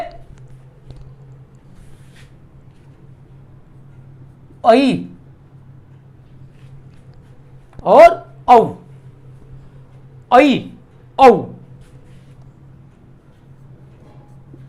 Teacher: Number 2, अर्धविवृत। जिन स्वरों के उच्चारण में मुख आधा खुलता है, अर्ध विवृत कहे जाते हैं।